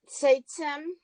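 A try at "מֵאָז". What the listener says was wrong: Seitchem. It's not seitem, it's seit. That's the end of the syllable. Seit. Chem.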